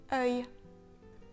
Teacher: le son est tout simplement un son en 2 parties, E and Y. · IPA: [œj]